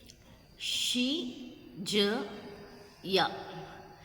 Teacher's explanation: Palatal, tongue near hard palate.